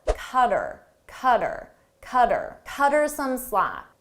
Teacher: Her, him, and them, we often shorten these. So her, I get rid of the H sound